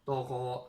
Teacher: you got the ta full mouth